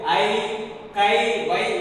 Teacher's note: தனக்குரிய 2 மாத்திரை அளவில் இருந்து குறைந்து ஒலிக்காமல் அப்படியே ஒலிக்கிறது